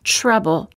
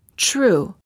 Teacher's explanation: when the t is followed by an R sound the T changes and becomes an almost CH sound instead of saying trouble we say say trouble instead of saying